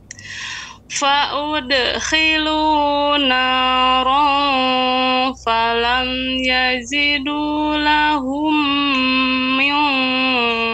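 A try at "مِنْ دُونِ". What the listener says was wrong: Tipis. Nun sukun ketemu dengan dal, ini ikhfa yang tipis. Dal kan bukan huruf isti'la. Jadi jangan mil. Nah, jadi lebih dibuka suaranya, bibirnya lebih dibuka. Nah, begitu. Kalau tidak dibuka, jadi tebal.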